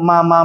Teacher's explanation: merapatnya bibir atas dan bibir bawah kalau mim disertai dengan gunah